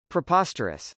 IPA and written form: prɪpˈɑstɚəs (preposterous)